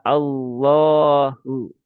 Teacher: Jadi langsung ke lam dan ditambahkan pangkal lidah yang naik ya.